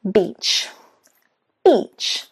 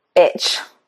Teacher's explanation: That means that it's a long sound, beach. What often, especially Italians and Spanish do, is they put a short E and it becomes I. Now, when you do this, instead of getting the word beach, you get the word, that's right, shall I say it?